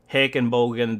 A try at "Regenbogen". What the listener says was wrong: It's with an R! Regenbogen.